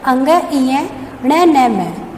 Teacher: इन व्यंजनों का उच्चारण नाक से किया जाता है। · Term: नासिकीय व्यंजन